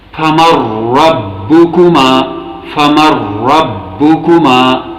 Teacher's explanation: یہاں نون اور را کے بیچ ادغام متقاربین کا قاعدہ عمل میں آیا ہے، کیونکہ نون اور را دونوں بھی اسی طرح قریب المخرج ہیں